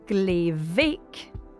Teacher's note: In glevik, very small, the B of bake changes to V.